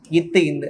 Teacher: இவ்விரண்டு எழுத்தும் நாவின் நுனிமேல் வாய்ப்பல்லின் அடிப்பகுதியை தொடுவதால் பிறக்கின்றன. நீங்க இத்து இந்துன்னு சொல்லும் போது இந்த மேல்வாய் பல்லோடைய அடியில தொடும்.